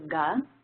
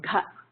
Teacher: there's a regular version and the Mahaprana version, the aspirated version